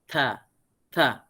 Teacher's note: Bila kita nak menyebut kalimah daripada huruf ta tu, makharijul huruf keluarnya daripada hujung lidah kita yang terletak pada hujung gigi.